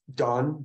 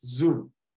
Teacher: Another one is the D sound becoming a Z sound.